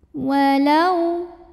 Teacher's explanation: Walau ada huruf lin atau harfulin karena waw sukun didahului baris fathah, maka cara bacanya dilembutkan